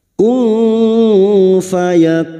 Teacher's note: maka bunyi nun sukun dibaca samar dan mendengung selama tiga harakat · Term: ikhfa Hakiki